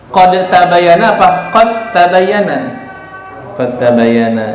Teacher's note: Kalau ta termasuk hamas, kalau dal adalah jahar gitu ya. Jadi sama makhrajnya, beda sifatnya.